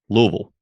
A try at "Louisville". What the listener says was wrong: I thought you said, yeah, you enunciated a little too much. Louisville. Louisville. Louisville.